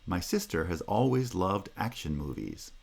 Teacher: movies has secondary stress so it's lower